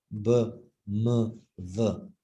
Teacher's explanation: ये सारे के सारे कॉन्सोनेंट्स ऐसे हैं जो कि बाइलेबियल हैं, इनके अंदर दोनों होंठों को टच करना पड़ता है और आर्टिकुलेशन होंठों के लेवल पे होती है